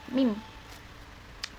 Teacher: Lalu menahannya udara di belakang kedua bibir tersebut, merendahkan di langit-langit lunak, maka akan keluar udara di rongga hidung, bergetarnya pita suara.